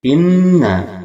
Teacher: hukumnya gunnah. 2 harakat kita dengungkan.